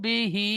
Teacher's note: বা টান হবে না, হাটি টান হবে